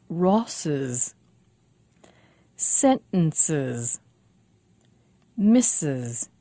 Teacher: When a word finishes with a sibilant and we need to add an S ending, we make it a little easier for ourselves. We add an extra syllable for the S.